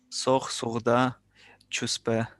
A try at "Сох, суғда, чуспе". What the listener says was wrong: Только г там, у тебя г нету, да? Сох, суғда, чуспе.